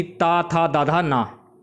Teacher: जिन वर्णों के उच्चारण से जीवा का अग्रभाग दंत से स्पर्श करता है उन्हें दंतस्थ वर्ण कहते हैं